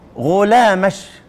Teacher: ينطقون الكاف كده شبيهة بالشين. خد بالك من كلام الشيخ، يبدلون وهو حرف بين الجيم والشين، وهي لغة لبعض العرب يبدلون من الكاف المؤنث شينا يخالط لفظها لفظ الجيم.